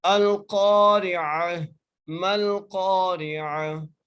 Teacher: عین کا مخرج ہے حلق کا وہ حصہ جو درمیان والا ہے، وہاں سے عین ادا ہوتا ہے